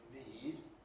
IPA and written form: niˑd (need)